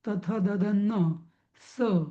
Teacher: नंतर दंत्यवर्ण म्हणजे दात लागतात तिथे. दातांशिवाय नीट म्हणता येणार नाही ते अक्षर.